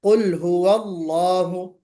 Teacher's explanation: जो लफ्ज जलाला है अल्लाह, इसको हमें पुर पढ़ना है